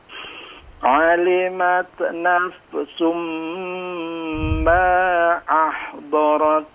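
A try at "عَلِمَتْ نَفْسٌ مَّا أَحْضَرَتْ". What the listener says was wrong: Ya, masih sedikit agak memantul ya. Tak sama fa-nya. Dicoba sekali lagi pada dat, lebih kalem ya. Ma-nya dipanjangkan lagi. Ma ahdarat.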